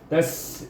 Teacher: huruf sin adalah huruf hamas dan safir, jadi bunyinya bersir sikit